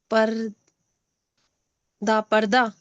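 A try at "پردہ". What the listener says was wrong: नहीं। प और र के रे नहीं है, दाल है, मैंने बताया आपको। और नीचे दो नुक्ते भी लगे हैं दाल से पहले।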